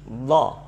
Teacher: ada sifat do yang jahar, tidak boleh ada angin, tidak boleh keluar desis, jadi bunyinya do.